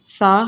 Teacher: ثا ہمیشہ نرمی سے ادا ہوگا، اس میں سیٹی کی آواز بالکل نہیں آئے گی